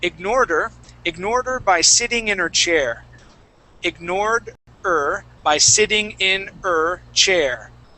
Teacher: we rarely say her most of the time we say ER